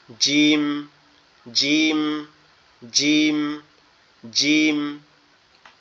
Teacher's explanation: জিমটা হচ্ছে আমাদের জিহ্বার মধ্যকান উপরের তালুর সঙ্গে লাগবে